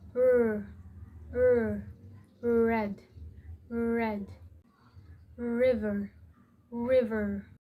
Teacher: It is an alveolar approximant. English R is smooth and not trilled. The tongue curls slightly back without touching the roof of the mouth.